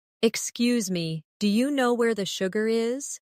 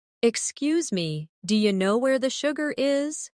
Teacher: Notice how do you changes to dia.